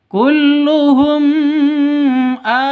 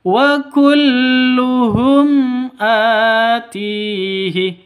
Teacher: dengan HAM Hamzah bertemu dengan Hamzah maka ini bacanya zhar atau jelas terang ya tidak boleh didengungkan tidak boleh dibaca panjang